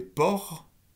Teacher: lorsque vous avez port, le re est sourd